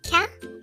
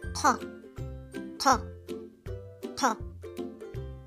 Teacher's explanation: It's deeper than the English K sound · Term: Qaf sound